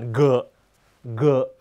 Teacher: ตัวGเนี่ยไม่มีในภาษาไทยต้องออกเสียงก้อง